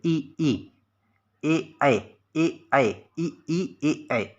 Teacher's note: ई कहते हैं जब आप, तो देखिए जो जीभ का अग्रभाग है, सबसे आगे वाला भाग है, देखिए उसका प्रयोग ज़्यादा हो रहा है, वो सक्रिय है पूरी तरीके से।